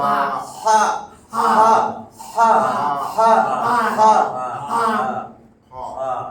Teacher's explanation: একেবারে শক্ত করে একদম হলকের মধ্যভাগ, গলার মাঝখানে এখানে হাত দিয়া ধরে হা হা হা হা হা।